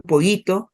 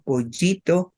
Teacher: tenemos solamente una y pero muy suavecita